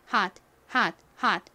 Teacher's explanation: 끝부분에 와서 약하게 발음이 나다 보니 hot 이렇게 거의 받침처럼 들립니다